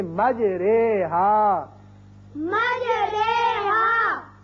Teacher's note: زبر کو اگر زیر کی طرف مائل کیا جائے یا الف کو یا کی طرف مائل کیا جائے تو وہ جو آواز نکلتی ہے وہ درمیانی مجہول سی آواز ہوتی ہے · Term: امالے